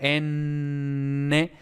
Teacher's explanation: Verás que no sale nada de aire por la boca, sino que todo sale por la nariz.